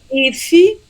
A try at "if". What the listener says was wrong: Yeah, so the pronunciation, not iffy, but you want to say if